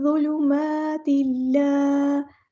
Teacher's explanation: تا کی جو 2 زیر ہیں ان کو لام کے ساتھ مکس اپ کر دینا، ادغام ہوگا یہاں پر، ادغام کامل ہوگا